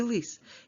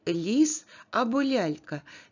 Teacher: звук л у слові лис є твердим приголосним А у слові ліс або лялька є м'яким приголосним при вимові твердого приголосного л достатньо напружений кінчик язика піднятий та